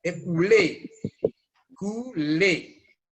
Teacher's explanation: la E, muy a pesar de que va acentuada en esta palabra, es abierta